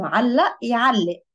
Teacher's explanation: the qaf over here is generally pronounced as a glottal stop